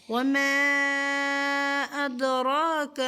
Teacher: را کو کھڑی زبر ہے, ایک الف کی مقدار پر کھینچیں گے